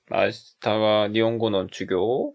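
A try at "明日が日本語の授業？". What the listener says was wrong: 주교? 이렇게 올라갈 때 꿈틀거리지 않았으면 좋겠네요. 예전에 텐키요호처럼 주교? 하면 돼요. 주교?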